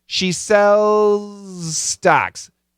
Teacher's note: A little bit of Z, a lot of S. But the Z is there.